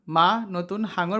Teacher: ফুসফুস থেকে আসা বাতাস মুখের মধ্যে প্রথমে বাধা পায় এবং নাক ও মুখ দিয়ে বেরিয়ে যায়